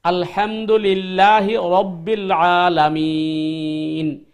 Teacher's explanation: তো হা এবং আইন দিয়ে আপনি ওই গলার চাপ দিয়ে আনতে হবে, আর আলামিন এটা লম্বা করতে হবে